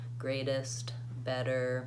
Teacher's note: it sounds a little bit more like a light D we find this when we move the word ends in ter